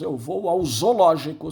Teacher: São 2 Os. Mas na língua atual nós pronunciamos um só. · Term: crase